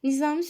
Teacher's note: Samitlərin hamısı cingiltidir. Nizami sözündə düzdür, samitlərin hamısı cingiltidir.